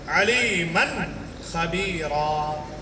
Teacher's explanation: نون کو ظاہر کر کے پڑھیں گے